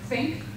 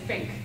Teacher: people will say something like think with the th and other parts of england they'll say fink